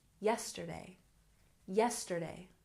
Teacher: yesterday has stress on the first syllable